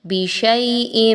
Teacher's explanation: 1 سے 2 الف کے برابر یا لین کی ادائیگی رکھیں گے. حمزہ کے نیچے 2 زیر کی تنوین آ رہی ہے، یہاں پہ نون ساکن اور تنوین کے قواعد کو اپنے ذہن میں لائیے تو دیکھیے کہ آگے حرف میم آ رہا ہے جو کہ ادغام کے لیٹرز میں سے ہے.